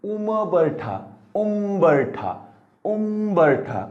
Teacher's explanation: म म्हणताना होटाला होट लागले, कारण उ वर अनुस्वार आहे, अनुस्वाराच्या पुढे येणारा ब, ब हा प वर्गातील.